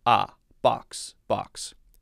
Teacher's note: I would say more of an ah sound instead of oh.